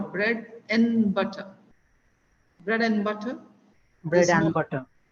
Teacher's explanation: we hardly hear the D at the end okay and and especially when you're talking about bread and butter there is no D at all